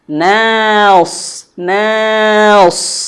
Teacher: Ini secara slow motionnya, secara pelannya. Naus, jangan langsung nos ya, tapi na, dari mulut terbuka. Mina, supaya nunnya tidak terbawa tebal.